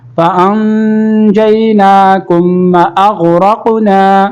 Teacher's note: فَأَنْجَيْنَاكُمْ کاف میم پیش کم یہاں پر غنہ نہیں کریں گے. میم ساکن کے بعد واو آ رہا تو یہاں پر غنہ نہیں ہوگا, اظہار ہوگا. فَأَنْجَيْنَاكُمْ وَأَغْرَقْنَا غین کا مخرج صحیح کریں گے.